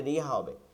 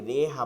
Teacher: জের ও জবরের একটা মধ্যবর্তী অবস্থানে জেরও হবে না জবরও হবে না · মূল শব্দের র এর উপর জবর থাকায় জেরকে জবরের দিকে ঝুঁকিয়ে পড়তে হয় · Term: এমালা